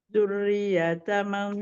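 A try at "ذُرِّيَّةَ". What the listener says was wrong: Dzurriyyata, ya bertasydidnya di nabar. Dzurriyyata.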